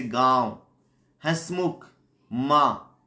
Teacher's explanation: नाक और मुंह दोनों से बोला जाता है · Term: चंद्र बिंदु